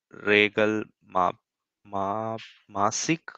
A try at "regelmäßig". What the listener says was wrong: So this is it's a umlaut, right? It's regelmäßig, not a. so regelmäßig.